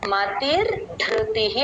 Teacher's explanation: మతిహి అనే నామంలో విసర్గ పక్కన నామంతో కలిసి మళ్ళీ రా లాగా మారుతుంది